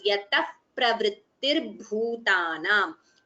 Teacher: Yataha pravrittirbhutanam. Visarga followed by pa. It is upadhvaniya, so you get the pronunciation as yatah pravrittirbhutanam. You don't chant the visarga completely, but we chant it as yatah pravrittirbhutanam.